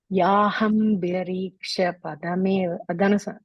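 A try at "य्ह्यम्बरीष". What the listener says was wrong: You are saying Yahambarisha, you are saying. It's Yahyambarisha. And the HYA, ha and ya coming together, okay? So Yahyambarisha.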